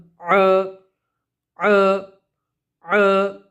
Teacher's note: आइन को हम गले के बीच से निकालेंगे